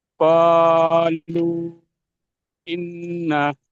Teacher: নুন তাসদিদকে এক আলিফ পরিমাণ গুণনা করে পড়তে হয়।